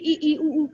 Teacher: संवृत, जिसमें जीभ सर्वाधिक ऊपर की ओर चिपकी हुई